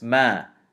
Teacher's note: mim fatha alif sukun ma. So it extends to two movements. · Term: mad tabeei